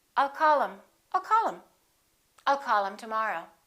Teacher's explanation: Instead of saying call him, we'll drop the H and we will say I'll call him.